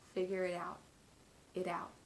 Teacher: the t in it is turned into a flap t because we're linking it together with the word out